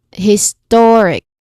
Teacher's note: The perfect one would be historic stress on the second syllable. Because again the rule for suffix is that we stress before the suffix.